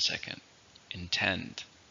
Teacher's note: How many syllables are in intend? 2, stress on the second,